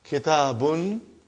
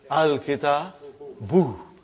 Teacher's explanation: Instead of bun, it became bu.